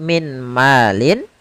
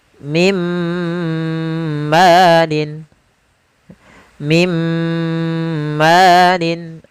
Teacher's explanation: Langsung dimasukkan ke huruf setelahnya dan ditahan suara gunnah pada huruf yang setelahnya. Kalau dia di huruf ya, ditahan di ya-nya. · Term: idgham bil gunnah